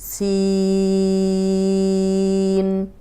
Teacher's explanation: سین میں سی کو لمبا کریں گے